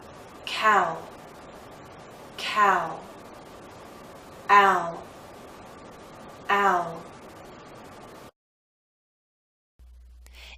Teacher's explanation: our lips are moving in to a circle not a tight one as in ooh but approaching that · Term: dip thong